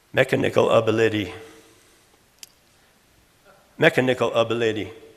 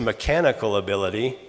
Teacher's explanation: All I did was remove that accent or stress from the second syllable and put on the first and third instead.